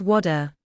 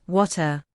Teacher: In American English, the T often sounds like a soft D